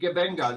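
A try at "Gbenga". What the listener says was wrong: It's not Jibenga.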